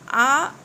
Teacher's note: आ कंठ से निकल रहा है।